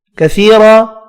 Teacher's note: یا مدہ الف مدہ ایک ایک الف کی مقدار میں کھینچ کر پڑھے جائیں گے